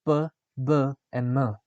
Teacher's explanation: the airflow is modified by creating a constriction between the lower and the upper lips. For example, p, b, and m. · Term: Bilabial